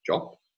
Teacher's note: the English word job, which has a voiced labial stop word finally, will be realized as a voiceless stop by native speakers of German, usually something like job. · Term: word final obstruent devoicing